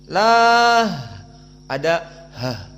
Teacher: lafdzul jalalah Allah disukunkan, maka ha as-sakinah berarti hams